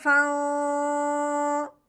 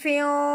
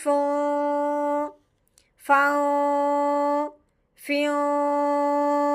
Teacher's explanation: تنوین پہ غنہ کرنا ہے، وہ بھی اخفا کا